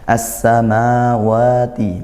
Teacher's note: Ah, lamnya seolah ya kita tidak baca. Tertulis tapi tidak terbaca. Ini idgham seperti itu ya. · ma wa dibaca panjang. Nah, panjangnya satu alif yaitu mad thbi'i. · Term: idgham syamsiyah